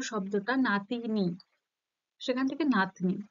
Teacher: যেহেতু মাঝের কোনো স্বরধ্বনি লোপ পেয়েছে, তাই এটা কি হবে, মধ্য স্বরলোপ।